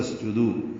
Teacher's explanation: تسجدو میں سین ساکن پہ ہمس ہے، دو واو مدہ ہے، 2 حرکات لمبا کریں گے.